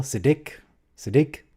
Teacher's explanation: It's Siddiq, emphasis on the second syllable.